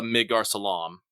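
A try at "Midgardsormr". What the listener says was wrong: yeah, I mean it's supposed to be Midgar Zormer. It's supposed to be Midgar Zormer, but with like a Z sound, just like Final Fantasy 14.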